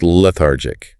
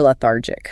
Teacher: The stress is on the second syllable, thar, lethargic.